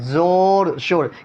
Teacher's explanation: واو مجہول جس واو کو کھینچ کر نہ پڑھا جائے، زور شور، کھینچے تو زور و شور ہو جائے گا، ٹھیک ہے، جو کھینچ کر نہ پڑھے اس کو مجہول کہتے ہیں، سمجھے۔